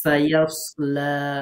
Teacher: সিনটা হচ্ছে একেবারে এই যে জিহ্বার আগা নিচের দাঁতের সাথে লাগিয়ে। এটা কিছুটা শিস দিয়া মতো উচ্চারিত হবে।